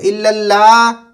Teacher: اگر آپ لا بولیں گے تو الف پڑھیں گے، آپ ہا چھوڑ دیں گے، تو اس کے لیے ہا کی آواز بھی نکالنے ضروری ہے، جیسے لا اور اللہ، الا اللہ.